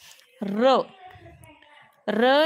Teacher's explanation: र या वर्णाचा उच्चार करताना र कंपन निर्माण होते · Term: कंपित वर्ण